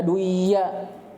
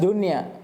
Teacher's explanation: maka nun tidak diidgham pada keduanya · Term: dibaca jelas